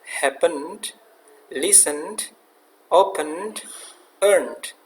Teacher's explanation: Kita tidak memberikan stres dalam pengucapan di suku kata yang kedua